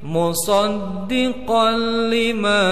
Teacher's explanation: tanwinnya langsung ke lam, idgham bila guna